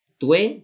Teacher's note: al ser cerrada la U y luego una vocal media abierta, pues bueno, pues se pueden diptongar en esta sinalefa